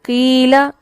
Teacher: زیر اس کو باریک کرتی ہے، کیونکہ ہم اپنے نچلے جبڑے کو، لور جا کو نیچے کی طرف کر رہے ہوتے ہیں. ایسے میں حرف اتنا پر نہیں ہوتا جتنا وہ زبر کے ساتھ ہو رہا ہوتا ہے.